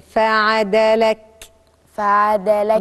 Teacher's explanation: أحد حروف الهمس اللي لازم أخرج شوية نفس وأنا بنطق الحرف عشان الحرف يظهر معي، لأن هو من مخرجه ضعيف فلازم يجري شوية نفس عشان يبان الحرف.